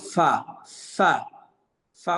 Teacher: যেমন ফা, ফা, ফা উচ্চারণ একটু বাতাসও বের হবে। নিচের ঠোঁটের পেট সামনের উপরে দুই দাঁতের আগার সঙ্গে লাগায়া ফা। নিচের ঠোঁটের পেট সামনের উপরে দুই দাঁতের আগার সঙ্গে লাগায় ফা।